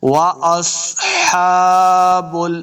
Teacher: سواد کو موٹا پڑھنا ہے۔ واصحاب ہا کے اوپر کھڑی زبر، اس کو 2 حرکات لمبا کریں گے